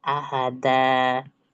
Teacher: Ya, karena dia fathah tanwin itu di akhir. Jadi fathah tanwin ketika diwakafkan jadinya fathah dua harakat. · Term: mad iwat